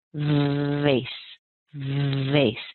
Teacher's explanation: Now the V is actually related to the F because the position of the mouth is the same. So if you can say face and you add a little voice and a vibration to that first sound, you'll end up saying vase.